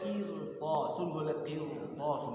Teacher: ro itu boleh dibaca tarqib, boleh dibaca tafkhim